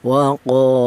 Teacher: Wah, berhubung ada alifnya ini matobi yaitu berfungsi untuk memanjangkan bacaan, maka huruf qaf yang berharokat fathah ini dipanjangkan yaitu dua harokat atau dua ketukan. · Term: matobi'i